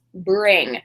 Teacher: bringing is a bit nasal. You're going to feel it in your nose. · Ing is a bit nasal. You're gonna feel it in your nose. Bring. And of course, for this form of the verb, brings, we need that z sound on the end.